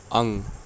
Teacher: अनुस्वार है, क्योंकि इसकी जो उच्चारण है वो नाक से हो रहा है।